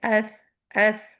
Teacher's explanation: جیسے آپ نے ٹپ آف دا ٹنگ اوپر کی دانتوں کے سروں کو لگائی وہاں پہ صرف ہوا گزر رہی ہے